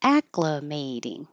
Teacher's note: May is underlined because it's secondary stress. It'll get a little longer, but not higher. So ack is high and longer.